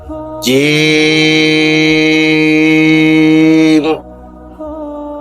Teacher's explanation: জিহ্বার মাঝখান উপরের তালুতে উঠবে, শক্ত সবল আওয়াজ হবে।